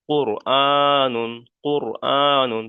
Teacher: র সাকিনের পূর্বে পেশ এসছে, র সাকিনটাকে পুর করে পড়তে হবে